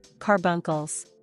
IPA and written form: ˈkɑr bʌŋ kəl (Carbuncles)